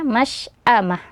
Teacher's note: makhroj tempat keluar syin itu dari tengah tengah lidah ke langit-langit · Tetap masy'amah, jangan sampai menjadi masy'amah ya. Karena makhraj tempat keluar shin itu dari tengah lidah ke langit-langit ya. Jadi tidak ada tidak ada yang bergerak dari bagian bibir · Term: shin sukun